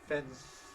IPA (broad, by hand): fens